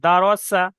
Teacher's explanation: ডাল যাবার দা, রজ যাবার র, দারা, হুম সিন যাবার সা, দারা সা, সিন, ওটা শিন, শিন নয় সিন, জিভের আগা দিয়ে সিন, সিন উচ্চারণ হবে দারসা।